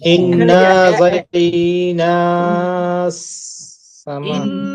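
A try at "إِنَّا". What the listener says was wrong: এক আলিফ টান হবে না।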